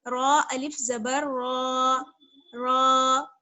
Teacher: रा पर जबर की हरकत है इसलिए मोटा पढ़ेंगे इसको